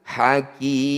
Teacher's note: Mad tabi'i bertemu huruf hidup kemudian dihentikan disebut bacaan mad arid disukun. Cara bacanya ki panjangkan 6 harokat, huruf terakhir sukunkan. Hakimi, ketika dihentikan hakim.